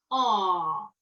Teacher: prononcer ce A à l'arrière de la bouche de façon très ouverte